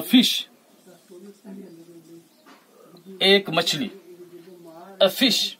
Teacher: by articulating fish we touch upper teeth with the lower lips